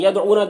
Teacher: دال میں قلقلہ ہوگا، او میں واو مدہ ہے، ایک الف کے برابر کھینچیں گے